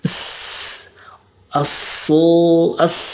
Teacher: kalau Sin dan Shad ada safirnya safir itu mendesis jadi as as gitu ya dan syin juga ada tambahannya yaitu